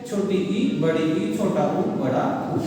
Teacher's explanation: ऐसे स्वर जिनके उच्चारण में मुख द्वार ना के बराबर खुला होता है, मतलब बिल्कुल बंद होता है, ठीक है, अर्थात केवल ना मात्र का खुला रहता है, उस समय उच्चारित होने वाले जो स्वर है वो क्या है? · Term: संवृत स्वर